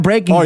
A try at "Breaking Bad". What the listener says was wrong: You said it like it's one word. Breaking Bad.